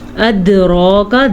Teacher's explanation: أدراك دال پہ کلکلا ہو رہا ہے اور را کو موٹا کر کے پڑھنا ہے